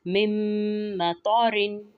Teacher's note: جیسے مم مطارن میں طا جو ہے اس کی ادائیگی کرتے ہوئے ہم خیال رکھیں گے کہ طا کو موٹا پڑھنا ہے